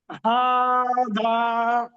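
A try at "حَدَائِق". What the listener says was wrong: হা, হাটা অত টান হবে না। হাদা, ডালটা টান হবে, ডালের উপরে মাদ আছে। ই টান হবে না। বলে একসাথে পড়ুন। হাদাইক।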